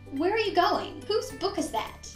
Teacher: But for most other questions, we use a falling intonation, especially for the 5W questions, the who, what, when, where, and why. So for these types of questions, our pitch will fall at the end.